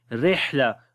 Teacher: ہا کو گلے کے درمیان والے حصے سے پڑھتے ہیں ، اور ہا کے اندر صفت ہم سے سانس جاری رہتا · را کو باریک پڑھیں گے، اس کے نیچے زیر آ گئی ہے